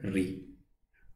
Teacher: मूर्धा से बोलने वाला स्वर है री